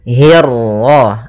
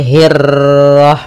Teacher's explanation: Nah, kemudian untuk huruf ra ketika dia berharakat tasydid itu atau dia berharakat sukun, dia ra-nya 1 kali takrirnya. Tidak boleh banyak-banyak, tidak boleh hirrah. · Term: ra tafkhim